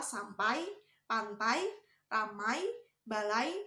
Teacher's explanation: Diftong ai diucapkan mulai dari ucapan bunyi sandi antara a dan i dan berakhir pada bunyi i tidak sempurna atau menghasilkan bunyi y.